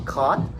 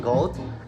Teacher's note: velar sound involve the back tongue against the velum. Example, the sound of ki as in caught, g as in goat, and as in sing.